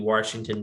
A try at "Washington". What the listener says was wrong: Washington? Did you really just say Washington? There's no R in Washington. Look, tell me where the R is.